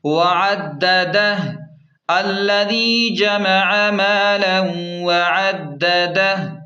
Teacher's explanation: وقف کا طریقہ کار یہ ہے کہ وقف کی صورت میں آخری ہا ساکن ہو جائے گی